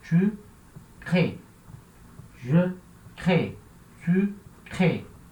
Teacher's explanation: a última sílaba é fraca, então ela não vai aparecer.